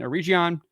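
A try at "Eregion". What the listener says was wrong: A hard G.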